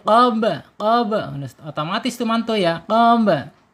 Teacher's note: Ba sukun ya. Ketika ada ba sukun, awas, kita harus ingat dengan qalqalah. Qalqalah ya harus mantul. Qaba. Otomatis itu mantul ya.